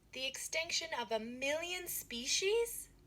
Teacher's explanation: Ngữ điệu đi lên ở million species.